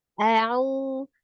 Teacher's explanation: Hamzahnya tidak panjang, tidak au. Jangan ya, jangan dipanjangkan. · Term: huruf hamzah